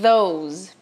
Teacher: Ou você vai assoprar sem nenhuma vibração, que é o não vozeado, como é o caso de think, e tem o vozeado, que daí é a língua entre os dentes assoprando, porém com as cordas vocais vibrando.